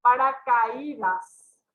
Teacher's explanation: acá tenemos una vocal fuerte y la vocal débil es la tónica, se rompe el diptongo y se forma el hiato